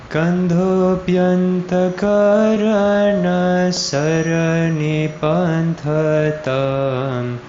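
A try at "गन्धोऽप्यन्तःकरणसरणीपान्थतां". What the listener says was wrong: I think hold the I on sarani. Try holding it there extra.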